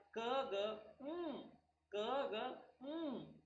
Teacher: Passive articulator is the soft palate and active articulator is the back of the tongue.